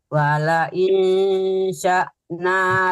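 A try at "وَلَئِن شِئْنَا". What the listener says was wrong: bukan sa tapi si ya.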